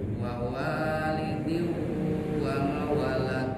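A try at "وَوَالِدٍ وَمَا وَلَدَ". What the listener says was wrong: Panjang maknya lihat. Wawalidi wa ma walada.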